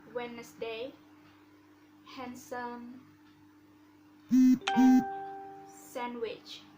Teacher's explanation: The letter D can be silent in words Wednesday, handsome, and sandwich.